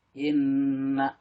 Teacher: Inna di sini gunah musaddada karena ada nun bersidah, dibacanya mendengung dan ditahan 2 harokat.